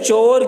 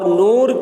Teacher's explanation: جیسے چور کی واو اور شیر کی یا دونوں مجھول ہیں، اور نور کی واو اور تیر کی یہ دونوں معروف ہیں